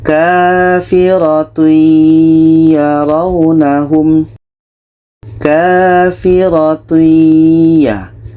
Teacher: Tanwin kita masukkan ke ya dan diiringi dengan dengung. Kafiroti ya raunahum. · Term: idgham bighunnah